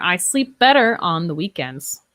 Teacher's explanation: So the F and the V kind of blend together. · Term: linking